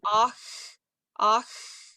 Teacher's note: you're going to have to create a little arc in your tongue so that you get something to create some friction with